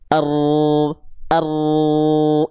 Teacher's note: Jadi ujung lidah kita tuh nggak betul-betul nempel, tapi bagian punggung lidahnya lah yang nempel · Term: huruf ro